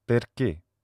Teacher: The close mid front unrounded vowel is e, and this is a vowel that occurs in Italian and French